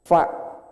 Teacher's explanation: Fa yang benar tuh bibir bawah bertemu dengan gigi seri atas.